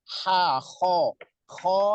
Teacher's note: ho lebih terdengar ngorok karena dia berada di tenggorokan paling atas, sama dengan kho ya.